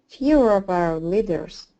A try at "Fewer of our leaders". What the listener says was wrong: Great job. Very good.